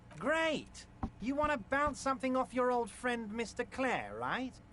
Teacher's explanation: I think the nasality of his voice is supposed to go with the overall sort of aberrant appearance.